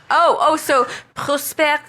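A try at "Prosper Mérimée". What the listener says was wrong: No, don't pronounce the S. Proper, maybe? Merime?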